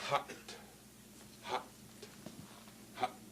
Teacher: where you can hear the glottal stop closing on that hot